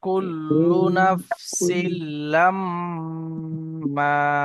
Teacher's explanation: এখানে মিম মিম গুন্না হবে ভাই এবং নুন গুন্না হবে